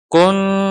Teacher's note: Tum, ini mim sukun bertemu hamzah, idhar syafawi. Kalau kun ditahan, tum jangan sampai ditahan. · Nun sukun bertemu ta. Kun, ketika kita gunnah di kun, lidah siap-siap di makhraj huruf ta. Di mana makhraj huruf ta, ujung lidah menyentuh gusi atas. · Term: ikhfa